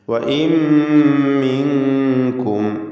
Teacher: സാക്കിനത്തായ നൂനിനെ മീമിലേക്ക് പൂർണ്ണമായും ലയിപ്പിച്ച് മണിക്കണം. ഇദ്ഗാം ബിഗുന്ന കാമിൽ.